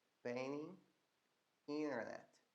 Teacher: E também algumas palavras que o T é opcional, como por exemplo, painting, internet. Nessas palavras você pode falar o T ou também pode ignorá-lo.